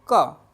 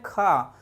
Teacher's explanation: तो क, देखो अब अल्प प्राण की अगर अपन बात करें तो क, समय कम लग रहा है, मुख थोड़ा सा खुल रहा है और वायु थोड़ी सी निकल रही है